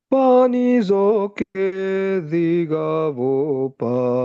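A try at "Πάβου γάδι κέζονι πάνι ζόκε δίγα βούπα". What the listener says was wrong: Wih, mantap. Good, lulus.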